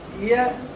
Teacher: the blade of the tongue is in constant contact with the palate, but it's not completely touching it. There is a partial connection of the blade of the tongue with the palate. · There is a partial connection of the blade of the tongue with the palate. That is why the sound produced is the palatal sound, and this yeah sound is neither a consonant sound nor a vowel sound, because it is in partial attachment with the palate. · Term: semi-vowel